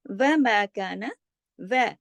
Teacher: ہونٹوں کا چھوٹا گول دائرہ بنتا ہے و بولنے میں